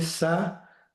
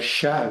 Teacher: la i está motivando que esta s se pronuncie como sha